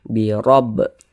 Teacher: Huruf ra memiliki tanda baca fathah. Huruf ra kalau memiliki tanda baca fathah seperti ini atau tanda baca dhammah, maka huruf ra juga dibaca tebal, dibaca tafkhim. Sehingga tebalkan huruf ra-nya.